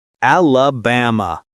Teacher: The stress is on the third syllable. Ba. Don't say alaba or elab. · Americans flatten that middle vowel with a schwah.